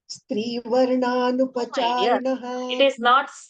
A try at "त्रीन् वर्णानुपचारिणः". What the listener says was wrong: it is not stree it is three it is not stree